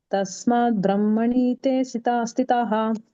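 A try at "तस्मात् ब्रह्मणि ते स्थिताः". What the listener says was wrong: ಬ್ರಹ್ಮಣಿ ಅಂತ ಮತ್ತೆ ಎಳಿಬಾರದು ಬ್ರಹ್ಮಣಿತೆ ಬ್ರಹ್ಮಣಿತೆ ಸ್ಥಿತಾಹ ಕೇವಲತೆ ಎಳಿಬೇಕು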